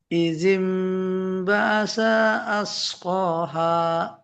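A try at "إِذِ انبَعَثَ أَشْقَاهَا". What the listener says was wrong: Ya, sanya tapi kepanjangan ya. Keseret sedikit. Izim ba'atha ashqaha.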